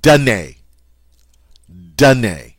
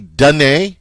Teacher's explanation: we don't have the nasal sound because the ON nasal pair is followed by another nasal consonant, so it loses its nasality.